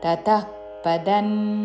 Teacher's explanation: విసర్గ తరువాత పాతో పదము మొదలవుతున్నది కాబట్టి శ్వాస వదులుతూ చివరిన ఫా లాగా ఉచ్చారణ